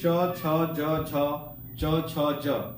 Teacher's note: ये बोलने पर जीभ आपका जो है तालू में सट जा रहा है, तो इसका आंसर जो है कि तालु हो जाएगा, इसका आंसर तालु हो जाएगा।